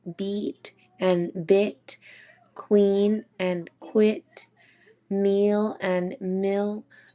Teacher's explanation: We can see that they're both high front in the quadrant and they are just adjacent of each other. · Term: minimal pairs